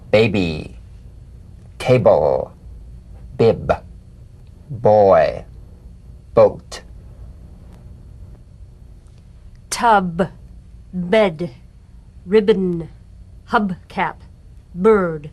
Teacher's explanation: Play this on the springing away from contact, not by pressing the lips together. You'll feel a gentle voiced pulsation on the lips like a delicate, crisp tap. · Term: drum beat B